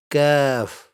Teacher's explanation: And kaf has a lighter sound. The tongue stays more forward compared to qaf.